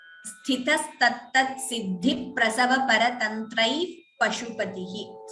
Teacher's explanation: So I stopped at paratantraihi for you to understand it better the first time, but when we chant the entire line, we don't pause there also. So visarga followed by pa upadhmaniya, it would be sthitas tattat siddhi prasava paratantrai pashupatihi.